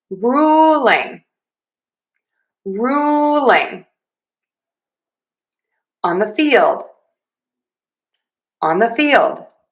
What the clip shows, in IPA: ˈruː.lɪŋ ɑn ðə fiːld